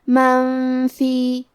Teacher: فا حروف الاخفاء میں سے ہے اور اخفاء کا معنی ہے چھپا دینا، تو ہم نون ساکن کو چھپاتے ہوئے اور غنہ کے ساتھ یہ حکم کو ادا کریں گے۔